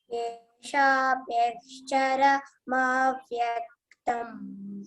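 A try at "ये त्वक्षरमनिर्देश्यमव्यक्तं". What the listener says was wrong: See, there is akshara. After that, there is a gap. No gap, isn't it? have to tell it as a single word. Pronounce it as a single word.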